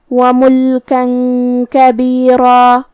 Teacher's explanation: کلمت کبیرہ میں کاف حروف الاخفاء میں سے ہے اور اخفاء کا معنی ہے چھپا دینا، تو ہمیں یہاں تنوین کو چھپاتے ہوئے اور غنہ کے ساتھ یہ حکم کو ادا کرنا ہے